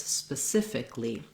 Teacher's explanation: those letters don't actually say ali but rather just li